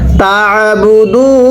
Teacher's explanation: যেখানে আইনটা দেখবেন উচ্চারণের সময় গলার মধ্যে হালকা চাপ দিয়ে পড়বেন, তাহলে আইনটা সহি শুদ্ধ উচ্চারণ হবে, অন্যথায় আইনটা হামজা হয়ে যাবে